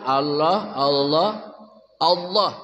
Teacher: taghlid itu tebalnya penuh. Ya, sangat tebal, nama taghlid.